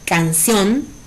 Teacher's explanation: la palabra canción es una palabra de 2 sílabas, donde su sílaba tónica es la última. Por lo tanto, es aguda.